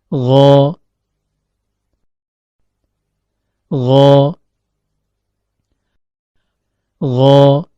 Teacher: Huruf ghain keluar dari ujung tenggorokan, yaitu pertemuan antara akar lidah dengan langit-langit lunak atau yang diistilahkan dengan palatum mole.